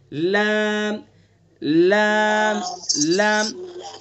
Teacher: زبان کا کنارہ ایک زاحق سے لے کر دوسرے زاحق تک اور اوپر کے دانتوں کے مسوڑے ادا کریں گے.